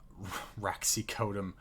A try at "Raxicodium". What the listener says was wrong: Raxicodium. There's an I there.